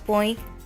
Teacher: na palavra põe o tio está em cima da vogal o Quando falamos a palavra põe o som também é nasal porque sai ao mesmo tempo pelo nosso nariz e pela nossa boca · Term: som nasal